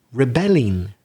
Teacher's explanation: it doesn't matter if you add an ending like ing ed it's the second syllable that you stress